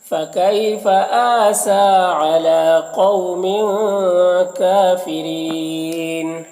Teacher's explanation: کافرین کاف میں کھڑا زبر ہے جو الف مدہ کی طرح ہوتا ہے، اور یہاں پر را کے نیچے زیر ہے تو را کو باریک پڑھیں گے، اور وقفی کی صورت میں مد عارض وقفی ہوگا تو اس طرح سے پڑھیں گے.